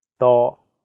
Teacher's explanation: The first character is in high flat tone, first tone.